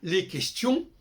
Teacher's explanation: Les Français disent, par exemple, les questions, on n'entend pas le S.